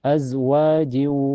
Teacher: Kalau diwasol menjadi hukum idgam bigunah karena tanwin kasrah ketemu ya. Cara bacanya tanwin kasrahnya dimasukkan ke ya dan ditahan sampai terasa ke hidung. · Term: idgham bigunah